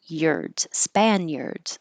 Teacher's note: For American English, this I and the A is blending together and making a y.